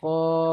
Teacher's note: এখানে আলিফ মাদ্দার জন্য এক আলিফ টান হচ্ছে